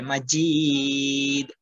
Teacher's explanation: হামিদু মাজিদ জিমটা ভাইব্রেশন হবে মাজিদ একটু টেনে টেনে সুন্দর করে বলবেন এই যে দুরুদ শরীফটা